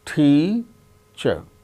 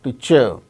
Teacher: Out of these two syllables, the first syllable is stressed. That gains importance, more importance than the other syllable.